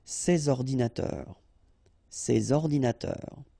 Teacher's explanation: you should make the liaison between S and O